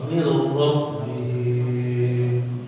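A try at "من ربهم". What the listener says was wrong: Jangan dipanjangin. Mir rabbihim. Mir rabbihim. Ya, mir rabbihim. Itu ada ya-nya Pak. Sedangkan itu dari ya langsung mir rabbihim.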